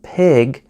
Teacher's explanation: To say an unvoiced consonant, like P as in pig, your vocal cords move very little,